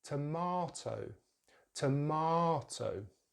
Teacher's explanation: So in British English, it's tomato, tomato. So the stress is in the same place as American English, the second syllable, but we're using the long vowel sound